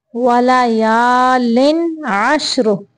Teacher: लिन पे तनवीन को सिर्फ ज़ाहिर करना है, इजहार का कायदा है